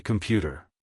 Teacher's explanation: In English, we say computer. The beat is on pew. The come and t sounds are very small and fast. Sometimes you almost don't hear them.